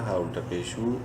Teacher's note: الٹا پیش کی وجہ سے ہا کو بھی ایک الف کے برابر لمبا کریں گے